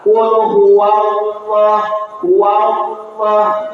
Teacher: Tapi ditim ditebalkan. Artinya ditafhim lidahnya diangkat ke atas lidah belakang.